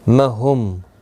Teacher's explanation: میم ساکن کے بعد حمزہ آیا ہے، اظہار شفوی ہوگا، میم کو ظاہر کر کے پڑھیں گے